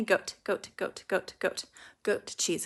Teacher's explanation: when you're saying something like goat cheese the te is so tiny it's just a little little tap